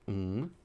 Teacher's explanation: So this is a voiced velar nasal stop. Now, depending on the course you're in, sometimes we omit the word stop, so you don't have to put the word stop in there, but for completion's sake, I will say it's a nasal stop. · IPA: [ŋ]